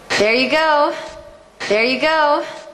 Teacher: The stress is all going up towards the peak. The energy peaks out on the word go. That has the O diphthong. · The energy peaks out on the word go. That has the O diphthong. You will need some lip rounding for that.